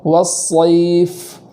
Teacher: والصیف، والصیف اس طریقے سے پڑھیں گے۔ آگے فا ہے تو فا کو اس طریقے سے ادا کریں گے کہ اس میں آواز جاری ہو